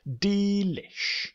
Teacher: than have three syllables let's chop it down to two syllables let's put the stress on the opening D which wouldn't normally be stressed